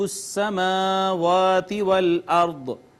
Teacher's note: را ساکن ما قبل مفتوح، را کو مفخم پڑھا جائے گا